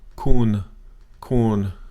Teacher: it's a flat tone, sometimes called a common tone, sometimes called a middle tone, but it's the natural sound of your voice. Kun. You may drop it off a little bit at the end.